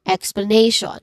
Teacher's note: Nay is the stressed syllable here.